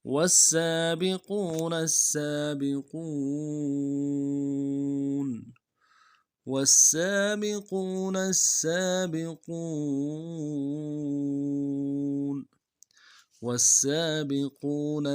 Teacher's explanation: واو کو سین کے ساتھ ملائیں گے، سین کی سیٹی باریک ہوگی، سین کے اوپر تشدید زور دیں گے